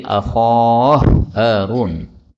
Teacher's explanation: ini hak ketemu hak maka boleh idgham menjadi akhah Harun